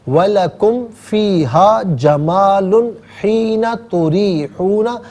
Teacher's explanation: یہاں جمال میں یعنی تنوین میں ناظرین غنہ نہیں کیا جائے گا